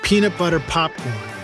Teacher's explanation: hand in front of your mouth and say peanut butter popcorn feel that blast of air on your hand that will cause a terrible sound on your microphone called the plosive